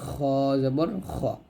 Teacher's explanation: গইন খ হলকের শেষ থেকে আমরা উচ্চারণ করব